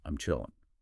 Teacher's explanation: the final G sound is very often dropped in natural highly informal pronunciation. and it becomes I'm chilling. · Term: drop G